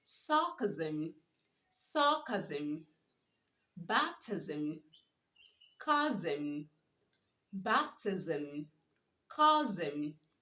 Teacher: Okay, you don't pronounce the sim sound instead of the zim sound. Okay, so when you have words with sm at the end, you are to pronounce the s, making the z sound.